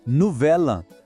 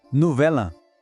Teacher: A gente junta o som do L com o A. Fica como se fosse uma palavra só.